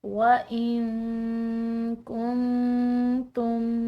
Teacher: وَإِن، یہاں پر نون ساکن کے بعد حروف اخفاء کا ایک حرف ہے کاف، تو اس کی وجہ سے اس نون ساکن کو ہم نے مخفی ادا کرنا ہے